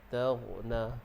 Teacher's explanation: Jangan terlampau tekan sangat huruf ghain. Sebab ghain ini makhrajnya di hujung kerongkong, berdekatan dengan anak tekak tu.